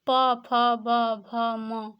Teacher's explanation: प, फ, ब, भ, म, इसमें क्या होता है कि हमारे दोनों ओष्ठ मिल जाते हैं तब इनका उच्चारण हो पाता है, इसलिए उनको ओष्ठ्य व्यंजन कहा गया।